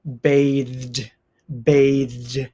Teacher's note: the voiced th sound into the D sound